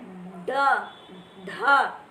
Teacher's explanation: आप बोले ड, ढ, जब ड और ढ बोलेंगे, देखेंगे आपकी जीवा पलट कर ऊपर तालवे में लग जाती है और फिर एकदम एक झटके से तालु को छूकर निकल जाती है, हट जाती है। · वे व्यंजन जिनके उच्चारण में जीवा की उल्टी हुई नोक, यानी जो हमारी जीवा की नोक है वो उल्टी हो जाती है, पलट जाती है ऊपर की तरफ को, और तालु को छूकर झटके से हटती है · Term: उत्क्षिप्त व्यंजन